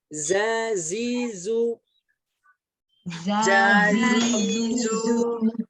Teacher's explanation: Nah, huruf za tanpa mengeluarkan ujung lidah.